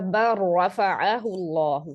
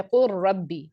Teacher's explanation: लाम को टोटली आपने मर्ज कर देना है रॉ के अंदर, इसीलिए अगले लेटर पे तशदीद आपको नजर आ रही है। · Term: इदगाम मुतकारिबान सगीर कामिल